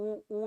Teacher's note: उ और बड़ा वाला उ दोनों का जब उच्चारण करते हैं तो गोले का निर्माण हो रहा है सामने होठ में गोला बन रहा है उ उऊ में ठीक